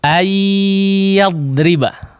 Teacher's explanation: Sebagian orang membaca ayyadriba. Tidak ada pengaruh khayshum, tidak ada gunnahnya. Hanya dipanjangkan saja di bagian makhrajiyahnya.